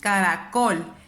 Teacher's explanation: Me doy cuenta que su sílaba tónica está aquí. Yo levanto más o hago más énfasis en col. Entonces esta es la última sílaba, la penúltima sílaba y la antepenúltima sílaba.